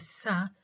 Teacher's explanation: the tip and blade of the tongue are placed very near the teeth ridge or the alveolar ridge, making a very narrow space between them. This is the tip and blade of the tongue articulated, are placed very near the alveolar ridge.